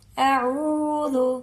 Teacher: او کے ساتھ واو مدہ ہے، عین کو لمبا کر کے پڑھیں گے